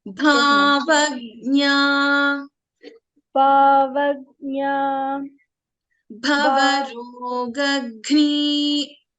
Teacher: Just remember, Gha in Bhavarogagni, Gha is a Mahaprana.